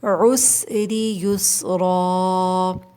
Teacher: سین میں سیٹی کی آواز آئے گی۔ یسرا آخر میں الف مدہ ہے، کھینچ کے وقف ہوگا 2 کاؤنٹس، ٹھیک ہے۔